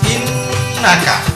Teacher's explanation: Nun bacanya innaka harus dengung dulu innaka